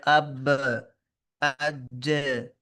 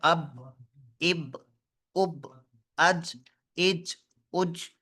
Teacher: یہ آواز تھوڑا سا نیچے گر کے تھوڑا سا اوپر اٹھتی ہے، تھوڑا سا اوپر، اب، اب، اب۔ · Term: قلقلہ